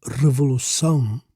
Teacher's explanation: the accent on the last syllable makes it an oxytone word, meaning the stress falls on the final syllable